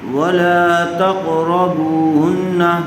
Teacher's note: قاف کو پر کر کے پڑھیں گے، اسی طرح را بھی پر ہوگا